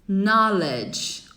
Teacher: você não fala o K